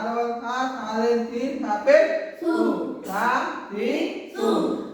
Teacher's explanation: সা জিহ্বার আগা হতে নরম ভাবে আদায় হবে